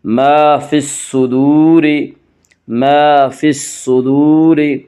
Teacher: الف اور لام کو نہ پڑھیں گے بلکہ بعد والے حرف سے ملا کر پڑھیں گے۔ صاد یہاں حروف شمسی میں سے ہے، صاد سے پہلے الف اور لام ہیں، اس سے الف اور لام کو نہ پڑھیں گے بلکہ بعد والے حرف سے ملا کر پڑھیں گے۔